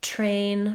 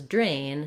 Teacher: We have voiceless T and voiced D. and there's more air coming out for train than for drain, drain.